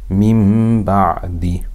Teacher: So whenever there's a noon, sukoon, or tanween followed by ba, we change the noon sound into a meem and read with ghunnah for two harakat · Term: iqlab